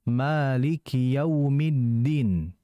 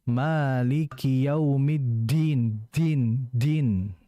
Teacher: Jangan kita itu mengalirkan udara. Jangan kita mendesiskan huruf dal. Karena tadi huruf dal itu bersifat jahar, bukan hamas. Sehingga jangan kita bacanya Maliki Yaumiddin, din.